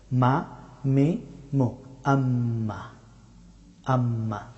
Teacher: মিম হরফটি উচ্চারিত হয় দুই ঠোঁট বন্ধ করে, তবে ঠোঁটের শুকনা অংশ থেকে